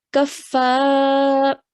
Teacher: Letter before carries a fatha. So stretching that fa sound for 2 counts. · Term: alif mud